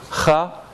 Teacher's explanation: It's just like ka, but it's not a stop, it's a fricative. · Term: velar voiceless fricative